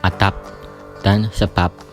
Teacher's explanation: fonem B pada silaba akhir kata adab dan sebab diucapkan P, adab dan sebab, yang persis sama dengan pengucapan fonem P pada atap dan usap. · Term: Netralisasi